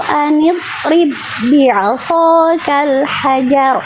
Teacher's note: dhod itu punya sifat rokhowah. Rokhowah itu mengalir, jadi pastikan jangan eh nid rib, jangan putus.